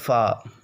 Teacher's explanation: یہ اوپر کے دانتوں کے کنارے اور نچلے ہونٹ کے تر حصے سے ادا ہوتا ہے